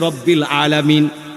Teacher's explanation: আলামিনের ভিতরে এই আইনের উচ্চারণটা গলার ভিতর থেকে আসবে, মাখরাজ অনুযায়ী উচ্চারণ হবে। আমরা অনেকেই হামজা দিয়ে উচ্চারণ করি, বলি আলামিন, ঠিক কিনা বলেন?